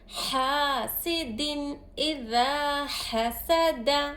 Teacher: الف سے پہلے حرکت زبر ہے، الف مدہ ہو رہا، ذا کو ایک الف کی مقدار کھینچیں گے